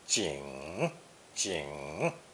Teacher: it's pronounced third tone